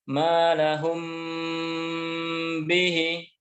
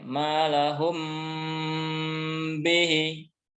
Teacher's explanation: Jadi mimnya dibaca dengan menutup rapat. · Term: ikhfa syafawi